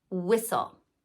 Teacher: only at the beginning of a word like in whistle now where I'm from we pronounce w h the same as we pronounce w